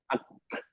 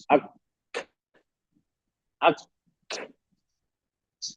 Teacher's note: आवाज गले से नहीं निकलती सिर्फ जुबान और तालु के दरमियान से साउंड निकलती है ओके गले का होकर कॉर्ड वाइब्रेशन नहीं करते जब जब अदा होता है।